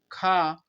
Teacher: स्पर्श व्यंजन कंठ ध्वनि अघोष महाप्राण है